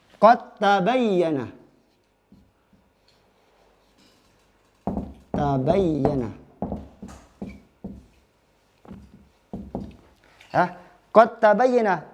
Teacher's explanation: Dal masuk ke ta, langsung masuk.